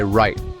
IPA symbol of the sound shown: ɹ